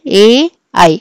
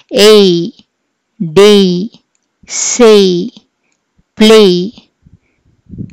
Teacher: ఒక వావెల్ దగ్గర స్టార్ట్ చేసి ఇంకో వావెల్ దగ్గర ఆగుతాం, అంటే ఇలా జారుతాం కాబట్టి దీన్ని మనం గ్లైడింగ్ వావెల్ సౌండ్స్ అని కూడా అంటాం.